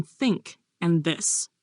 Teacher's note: These are made with the tongue touching the teeth, like the sounds in think and this. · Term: Dental